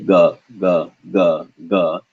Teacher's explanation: for ga, your vocal cords vibrate a lot.